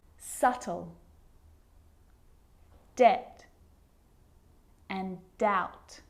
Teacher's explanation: my lips aren't closing and coming together to form the B sound I'm just pronouncing the T